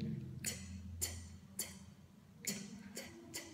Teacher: Mình sẽ để cái lưỡi này, bạn đẩy đập vào cái hàm răng dưới nhé